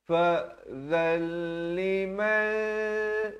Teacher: Asalnya izhar di sini baca zan. Tapi bila datang lam jadi idgham bila gunnah. Masuk tanpa dengung jadi fa'zal.